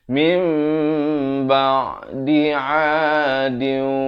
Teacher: Iqlab yakni ditukarkan bunyi nun kepada bunyi mim. Daripada bunyi min jadi mim, tetapi dipanjangkan 2 harakat.